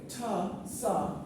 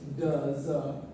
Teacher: ta, sa, these are voiceless. Da, za, na. This is basically nasal.